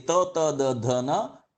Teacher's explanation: we are using our tip of the tongue with the teeth. When you say ta, ta, da, dha, na, only the tip of the tongue is touching the upper palate.